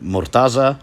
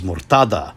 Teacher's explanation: name is murtada now you may have noticed that the pronunciation and transliteration previously had a z phoneme well while now it has a d phoneme